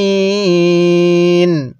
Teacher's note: ইয়া জের মি নুন জবর না আলা মিম ওয়াকফ করলে আলামিন আইনটা পড়ার সময় গলার মধ্যে হালকা চাপ দিয়ে পড়লে আইনটা সহি শুদ্ধ উচ্চারণ হবে